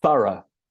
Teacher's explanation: So we stress the first syllable.